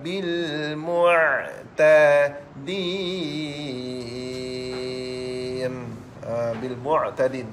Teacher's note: huruf ain, tempat parkirnya di pertengahan kerengkung adik-beradik dengan huruf ha